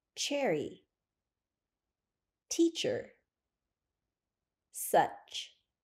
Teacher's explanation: ch ch sh sh see H to make the CH sound push your lips forward a little and push your tongue up to the top of your mouth to block air then lower your tongue and open your mouth a little to release the air Cherry teacher such sh to make the sh sound keep your